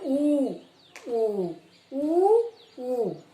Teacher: ओष्ठ, ओष्ठ होता है होठ, यानी कि होठों के द्वारा जो बोले जाने वाले सहायता करते हैं होठ जिन वर्णों में, उन्हें ओष्ठ का स्थान है। जैसे कि ऊ, हमारा होठ जो है आगे बढ़ जाते हैं ऊ बोलते समय